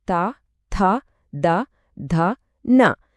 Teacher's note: ఈ శబ్దాలు పలికేటప్పుడు నాలుక కొన పళ్లను తాకుతుంది